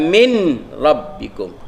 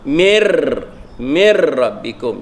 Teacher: Jadi kita masukkan nun mati ke dalam ra, mana seolah-olah nun tu sudah tidak ada. Mir, kita tak kata min rabbikum, kita kata mir rabbikum. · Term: idgham bila gunnah